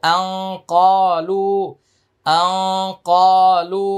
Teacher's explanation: এটা ইকফা গুন্না কিন্তু গুন্নাটা মোটা হবে আর ক এক আলিফ টান লু এটা তিন আলিফ টান